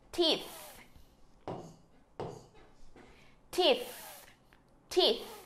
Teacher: Lưỡi để giữa hai răng thổi ra âm thờ.